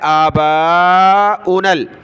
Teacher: با کو زیادہ کھینچنا ہے کیونکہ اس کے ساتھ الف بھی ہے اور مد بھی ہے